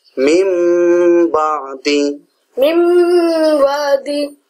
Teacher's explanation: কারণ এখানে শর্ত হইল নুন সাকিনের পরে বা আসলে তারপর এটা মিম হবে।